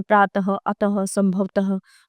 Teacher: अह को विसर्ग कहते हैं। इसमें हवा झटके के साथ बाहर निकलती है।